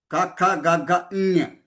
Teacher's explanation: ञ अक्षरं नासिकद्वारा वदामः, नासिकद्वारा, नासिकद्वारा, नासिक अर्थात नोस, नोस अर्थात संस्कृत में नाक, नाक से वदना है, बोलना है। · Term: अनुनासिकः